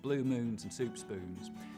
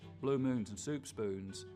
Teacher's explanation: the tongue stays further back through that whole vowel sound instead of coming forwards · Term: less Goose running